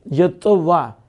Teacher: تا کو طا کیا، پھر طا کا طا میں ادغام کیا تو یتطوع ہو گیا